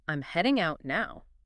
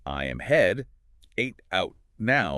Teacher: heading links smoothly into out.